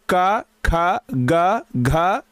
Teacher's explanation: क ख ग घ ये सब का उच्चारण स्थान कंठ होता है